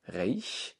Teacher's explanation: Reich ist ein Ei, ein Diphthong und ein auslautendes CH.